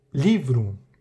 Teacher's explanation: Tem uma sílaba que é a mais forte, né? Na palavra livro, a sílaba tônica é li.